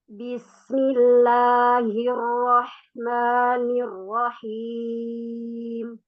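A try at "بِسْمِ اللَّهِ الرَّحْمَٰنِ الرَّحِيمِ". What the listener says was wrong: Laisa ar-rahim, ra-nya jangan ditekan. Bismillahirrahmanirrahim. Lembut saja.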